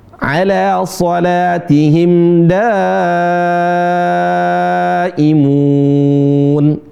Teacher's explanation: ala shatihim daimun ya da satu da da dua da tiga daimun itu empat seperti itu lima 4 sampai 5 sekali lagi ya kemudian ditahan enggak usah malu-malu sebagian teman terburu-buru panjang baru cuma dua harakat saja Di sini mad wajib ya hukumnya wajib empat harakat atau sampai lima harakat · Kalau ada mad setelahnya hamzah ditahan 4 ketukan sampai 5 ketukan atau 4 harokat sampai 5 harokat.